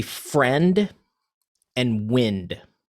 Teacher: friend and wind would be a consonant rhyme, because the consonants on the end are the same, but your vowel is different